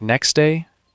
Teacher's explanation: Some sounds just disappear completely. Next day often loses its T sound. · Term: dropped sounds